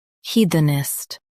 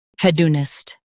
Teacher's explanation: hed un ist hedonist hed un ist hedonist In US, stress he. In UK, stress hed.